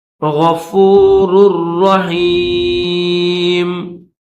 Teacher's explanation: واللہ غفور الرحیم، دو راہ ہے، پہلی جو راہ ہے اس کے اوپر دو پیش ہے، یہ دو پیش ہے، ایک سیدھا ایک الٹا، دوسری یہ جو راہ ہے اس کے اوپر تشدید ہے، تو پہلی راہ کو دوسری راہ کے ساتھ ملا کر پڑھیں گے